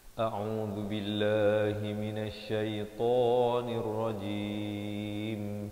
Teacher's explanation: di akhir barulah dirapatkan mulut bagi menyempurnakan huruf mim